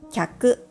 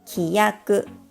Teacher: きゃく (customer) consists of two moras. きやく (terms) consists of three moras.